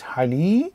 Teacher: we know the ya extends the kasra, so it's hali, ba, alif, and the fatatain, haliban, which is milk. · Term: long vowel